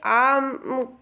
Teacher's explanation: विवृत स्वर में आ केवल आता है। इसके उच्चारण में मुख सबसे अधिक खुलता है